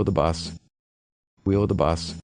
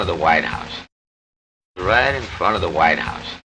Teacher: if the next word begins with a consonant sound, we often don't pronounce the [v] sound at all